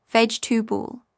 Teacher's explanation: dropping the middle syllable